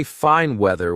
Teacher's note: Say fine weather with a full N sound. Say important meeting with a sharp T at the end of important.